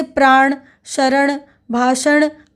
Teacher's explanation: उसमें अनुनासिक लगातार व्यंजन के साथ लगी ही रहती है जैसे प्राण शरण भाषण आदि शब्दों में ण की अनुनासिक अंत तक सुनाई पड़ती है